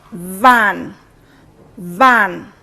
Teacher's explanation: is in the word van van you will have observed that my upper teeth come in contact with the lower lip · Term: labiodentals